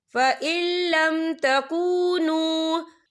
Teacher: یہ دیکھیں فَإِل، یہاں نون ساکن ہے، نون ساکن کے بعد جو ہے لام آ رہا ہے اور لام جو ہے حروف یرملون میں سے ہے، تو یہاں پر ادغام ہوگا، تو ہم اسے بنا غننے کے پڑھیں گے